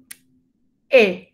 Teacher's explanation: Ven que tiene un poco de A, la boca más abierta, no es hacia allá, sino hacia abajo. E. Casi como si pusiéramos boca de A y dijéramos E, ¿cierto?